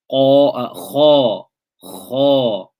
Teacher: There is no contact between the tongue and the upper palate, and you can feel the airflow coming between the tongue and the upper palate. Kha. This is why we call it infitah.